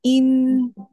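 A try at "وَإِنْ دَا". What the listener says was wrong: আপনার মুখটা বন্ধ হচ্ছে কিনা খেয়াল করবেন, ইন বললে কিন্তু মুখটা বন্ধ হয় না। আমি ইকফা লেটারের ক্ষেত্রে আমি মুখটা বন্ধ করে ফেলবো, ইন দা, ইন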